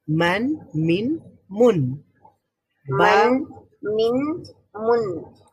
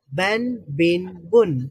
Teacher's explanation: তাহলে শেষে একটা নুন হচ্ছে, তানবিনের উচ্চারণটা শেষের দিকে একটা নুনের উচ্চারণ হয়।